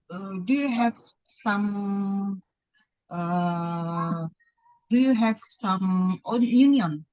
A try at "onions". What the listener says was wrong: Onions ya. Kalau union itu perserikat pekerja gitu loh Kak. Ya, jadi onions pakai S juga tapi depannya O ya. Onions.